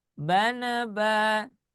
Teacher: ketika di putaran yang kedua dimulainya nadanya sedikit naik. Bana ba seperti itu ya.